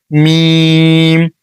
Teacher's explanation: যেখানে আমরা মেরিল অথবা লিপস্টিক লাগাই সেখান থেকে উচ্চারণ করবেন